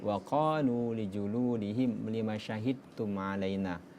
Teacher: Ketika huruf da bertemu dengan ta, maka dihilangkan huruf qalqalanya. Lima syahidum melebur dengan huruf ta. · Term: idgham mutajanisain